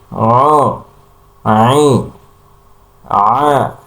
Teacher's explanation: ketika menyebutkan huruf ain suaranya keluar dari hidung ya seperti ai a ya hidungnya dulu baru tenggorokan tapi yang benar adalah semuanya seluruhnya keluar dari pertengahan tenggorokan aa a u I.